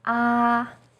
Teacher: First tone, 一 声, is high and steady.